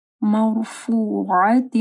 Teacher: را ساکن ہے، ٹھیک ہے، اور اس سے پہلے زبر ہے تو را موٹی پڑی جائے گی. مرفوعہ، عین کو واضح پڑھنا ہے.